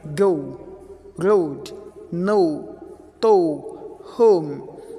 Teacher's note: we start on the schwa sound, and schwa sound, the weakest form of sound, and finishing on the U sound